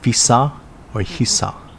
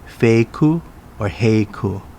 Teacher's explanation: the f and h sounds are sometimes interchangeable